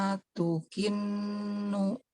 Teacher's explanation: Nun saddah dommah bigunnah harokatain